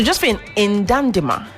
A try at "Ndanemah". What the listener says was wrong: Like the N is silent. Ndanemah. N's are mostly silent.